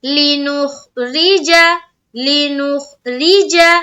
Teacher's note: را زیر ری، را کو یہاں پر باریک رکھنا ہے